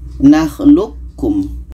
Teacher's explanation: Qa ini kita masukkan ke ka. Qa ini tidak jadi qalqalahnya. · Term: idgham mutaqaribain